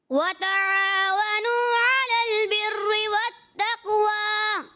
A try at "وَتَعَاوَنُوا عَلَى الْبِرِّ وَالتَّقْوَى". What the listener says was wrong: وَتَعَاوَنُوا یہاں پہ واو مدہ ہوگا اور انہوں نے دراز نہیں کیا, سو کھینچا نہیں.